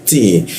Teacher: Wa ma, ini hamzah ya, posisinya di tenggorokan bagian bawah atau alif dia, ada waw kita panjangkan, ti. Nah, ti menggunakan ujung lidah bertemu gigi dia, ti. Ada desis tipis bocor halus, ti. Ti ya masuk ke ya di tengah lidah dia, ya.